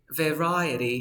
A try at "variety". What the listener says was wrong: you need to open your mouth a little bit